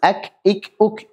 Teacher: Berikutnya setelah qaf agak turun sedikit adalah huruf kaf. Huruf kaf adalah pangkal lidah di bawah makhrajnya qaf, nempel dengan langit-langit atas, bagian daging yang lunak dan tulang yang keras secara bersamaan. · Nah, makhrajnya kaf adalah kena dua-duanya sekaligus. Kakiku dan kaf tipis. Punya sifat hamas